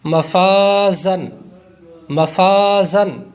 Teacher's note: الف سے پہلے فا ہے، یہ باریک پڑھا جاتا ہے اس لیے یہاں پر بھی الف باریک ہو جائے گا